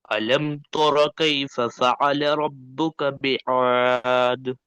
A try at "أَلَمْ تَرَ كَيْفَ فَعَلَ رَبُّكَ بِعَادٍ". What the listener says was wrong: تورا نہیں ہے، تارا، تا باریک را موٹا. ألم ترى، ألم ترى.